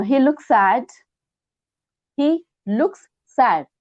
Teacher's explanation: it's twinning or gemination uh he looks sad he looks sad so combine two s together